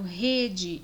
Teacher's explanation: o E longo, por sua vez, vejam que ele não vai dar o aberto, ele vai dar o nosso E fechado.